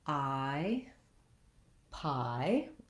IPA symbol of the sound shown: aɪ